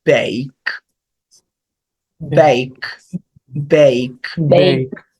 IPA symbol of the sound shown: ei